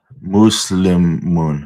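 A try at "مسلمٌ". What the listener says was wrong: Not moose. Say it quick.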